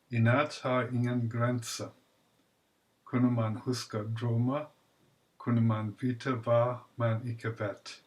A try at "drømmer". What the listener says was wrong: One more mistake that I hear often, drømmer. You said something like drømme. So again, this indistinct vowel, like in teacher.